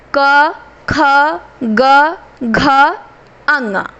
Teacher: क वर्ग इसका उच्चारण कंठ से होता है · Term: कंठ व्यंजन